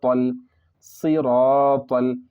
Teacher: صرف لام پڑھا جائے گا، الف کو نہ پڑھیں گے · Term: قمری